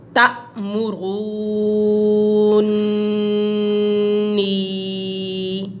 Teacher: لضالون ولضالین اتحاجونی تأمرونی، یہ حمزہ ہے، اس کے اوپر جزم ہے۔ جب الف کے اوپر جزم ہو، حمزہ کے اوپر جزم ہو تو ہم اس کو جھٹکا لگا کے پڑھیں گے